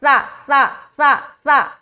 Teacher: حرف سا میں سیٹی آواز نہیں آئے گی, سختی بھی نہیں ہوگی, سا نہیں بولنا, ٹھیک ہے, سا بولیں گے غلط ہو جائے گا, سا بولنا ہے, سا سا سا سا, سیٹی نہیں آنی چاہیے.